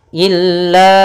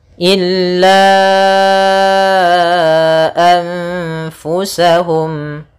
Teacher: Illa, panjangnya berapa harokat? Di sini panjangnya yaitu 4 harokat. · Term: mad jaiz munfasil